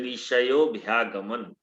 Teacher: विसर्ग को ओ हो गया है, ओ के समान हो गया है, तो ऋषयोभ्यागमन ये हो गया है।